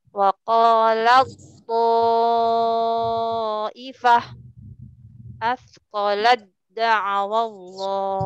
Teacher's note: Jadi yang sukunnya tidak dibaca, langsung dilebur ke tasjid. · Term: dilebur sempurna